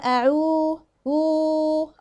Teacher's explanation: عندي هنا الواو وهنا مادية مقدارها حركتين، بنقول يبقى لو جبنا بقى رقم 3، 1 مع 2 مع 3 تبقى أعو أعو. وطبعا أحذر جدا من أنا أعمل غنة هنا، بتبقى كأني مطلعاها من الخيشوم، أو الأعو عو عو غلط.